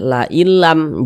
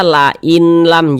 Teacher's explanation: kan huruf idgham bila ghunah maka hukumnya idgham bila ghunah sehingga cara membacanya itu dengan dengan memasukkan bunyi nun sukun ke huruf lam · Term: idgham bila gunnah